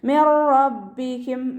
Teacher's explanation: നൂൻ സാക്കിനയ്ക്ക് ശേഷം ഇദാം ബിലാഗുനയുടെ അക്ഷരമായിട്ടുള്ള റോ വന്നിട്ടുണ്ട്. നൂൻ സാക്കിനയെ റോയിലേക്ക് നമ്മൾ ലയിപ്പിക്കുന്നുണ്ട്, പക്ഷെ നമ്മളവിടെ മണിക്കാതെ ഓതിക്കൊടുക്കുക കേട്ടോ, ഉന്ന കൊടുക്കാതെ ഓതിക്കൊടുക്കുക.